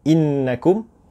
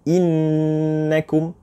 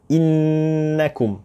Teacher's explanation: lidah kita terus melekat di langit-langit. Innakum. Tapi mulut kita tidak tutup. Innakum. Lidah kita terus melekat ke langit-langit kita bagi huruf nun musyaddadah.